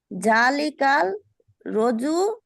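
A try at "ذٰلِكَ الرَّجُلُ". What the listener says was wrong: জালিকার রজুলু। কাল কেন হবে? র আছে না, রকে তাসদিদ যুক্ত করলে কাল হবে।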